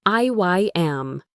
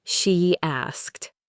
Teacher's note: If the first word ends in a sound like E or I, where your lips are spread, we add a tiny Y sound.